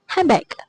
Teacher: in casual speech, the word handbag might be pronounced as handbag where the D sound is dropped